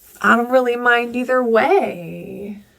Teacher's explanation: A falling intonation occurs at the end. That's the drop in pitch, because that's telling your listener you're finished the statement.